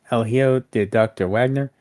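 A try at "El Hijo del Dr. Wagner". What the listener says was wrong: You don't pronounce the H.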